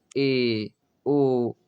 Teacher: मुख द्वार लगभग आधा बंद रहे, ए ओ आधा बंद रहते हैं, ये अर्ध समृत कहलाते हैं। पूरा बंद समृत कहला जाएगा, लेकिन आधा रहेगा तो अर्ध समृत हो जाता है।